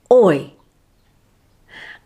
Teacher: sound is slightly longer than the second and has more emphasis notice the lip movement goes from rounded to a slight smile and the tongue moves from forward to upward · the first sound is slightly longer than the second and has more emphasis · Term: diphthong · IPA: /ɔɪ/